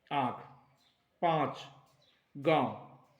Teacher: जहां पर नाक से ध्वनि निकलती है उच्चारण के समय और उसके साथ साथ मात्रा जो वर्ण पर होती है वो दीर्घ होती है, प्रायः ऐसा देखा जाता है, अपवादों को छोड़ दिया जाता है। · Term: अनुनासिक